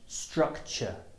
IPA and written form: ˈstrʌktʆə (structure)